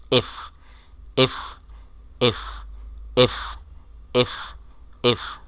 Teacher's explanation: সঠিক মাখরাজ বা উচ্চারণস্থল হলো এই লেটারটার জন্য উপরের দাঁত নিচের ঠোট